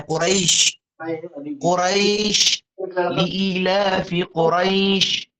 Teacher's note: یائے لین کے بعد شین آ رہا ہے اور شین کے اوپر جو ہے وہ وقف ہو رہا ہے، سکون آ رہا ہے، تو اب یہاں کے اوپر کہہ رہے ہیں مد لین کریں گے.